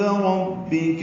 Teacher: ربک میں را پر پڑھیں گے، با سے ملائیں گے، کاف باریک ہے